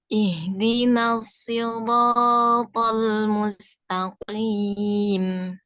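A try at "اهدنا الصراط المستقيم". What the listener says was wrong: Dia itu hampir mirip dengan sin kedengarannya. Ya, shad itu dalam penyebutannya. Perbedaannya adalah sifatnya. Kalau shad dia ada sifat isti'la'nya, yaitu pangkal lidah naik menyentuh apa namanya itu langit-langit bagian dalam. Shad ihdinasi.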